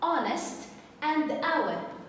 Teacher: the H is silent okay so I don't pronounce the letter H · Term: silent letter H